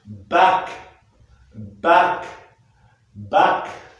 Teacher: Le dos de la langue sort, elle est antérieure. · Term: A antérieur